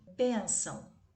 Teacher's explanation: É uma sílaba bem nasal, então é uma paroxítona, porque a sílaba tônica é a penúltima